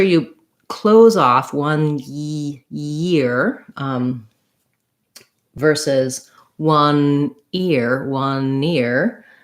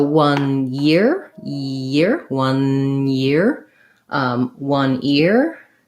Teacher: With 1 year, I need to have the sound, the N sound, one, and then I need a glide, the ya.